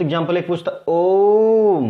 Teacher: ओम को तीन गुना समय लग रहा है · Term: प्लुत स्वर